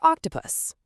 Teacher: O gives us the open rounded aw for octopus.